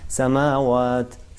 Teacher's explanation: مثلا سین پہ جو ہے وہ عام حرکت ہے, ایک حرکت ہے سا, لیکن میم پہ جو کہ کھڑی زبر ہے اور اسے مدی کہتے ہیں, یہ مد عادی ہے, اس کو دو حرکت فقط کھینچنا چاہیے